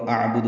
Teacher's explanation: حمزہ اقصی حلق سے اور عین وسط حلق سے